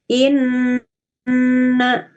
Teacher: Menahan ya, gunnah inna sambil dengung. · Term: Gunnah musyaddadah